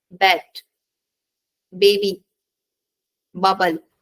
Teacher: To produce b sound, close your lips, stop the airflow, and then release them with a voiced sound